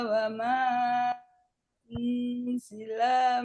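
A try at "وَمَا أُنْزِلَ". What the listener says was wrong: Nah, ini wzilnya kepanjangan.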